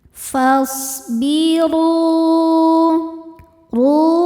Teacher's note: Huruf ro dibaca secara tafkhim karena harakatnya di atas yaitu harakat dommah. Cara bacanya ro dibaca tebal.